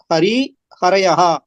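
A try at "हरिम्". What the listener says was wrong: இல்ல ஹரிம், அது வந்து இம் அங்க இந்த இடத்துல மறைஞ்சிருக்கு. ஹரிம்.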